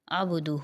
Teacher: ہو کے اوپر کھڑا پیش ہے، 1 الف کی مقدار اس کو کھینچیں گے